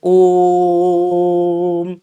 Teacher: तो ओ की ध्वनि को आप लंबा खींच रहे हैं। तो अगर आप ओ की ध्वनि को लंबा खींच रहे हैं तो ये जो स्वर बनेगा, ये स्वर कैसा स्वर बनेगा, तो ये आपका प्लुत स्वर बनेगा।